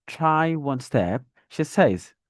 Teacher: You can see that the falling tone is at the end of says, not at step. At step, there's a dragging and elongation, and there's a rising tone there.